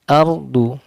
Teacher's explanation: ro sukun ditebalkan, du dibaca tebal karena huruf tebal